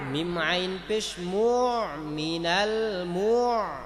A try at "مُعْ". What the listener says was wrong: মুআ বলে ঠোঁটটা গোল হবে না, মিম বলার সময় ঠোঁটটা গোল হবে, আইন বলার সময় ঠোঁটটা আবার স্বাভাবিক অবস্থায় চলে আসবে, মুআ অন্যথায় প্রপার উচ্চারণটা আসবে না। মিনাল মুআ,